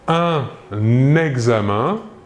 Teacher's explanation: nous réaliserons donc la liaison entre le N et le E